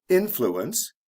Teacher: the stresses on the first syllable